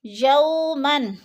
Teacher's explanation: یو پہ جو ہے وہ لین ہے، وہ ساکن سے پہلے یا کے اوپر زبر ہے، وہ لین کو لمبا بھی نہیں کرنا اور جھٹکا بھی نہیں دینا